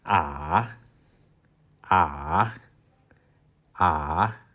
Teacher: It starts with re, and you drop to do, and then you go up to fa again. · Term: third tone